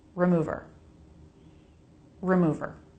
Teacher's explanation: it's a stressed syllable, move, with a really quick R sound before and after. The quickest R sound you can make.